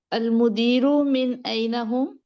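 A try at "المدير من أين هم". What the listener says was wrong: نہیں نہیں، مدیر کے پاس تھوڑا پوز لیا کریں نا کہ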